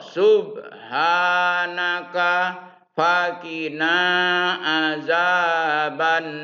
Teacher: Tulisannya nari, baca nar. Mad arid li sukun.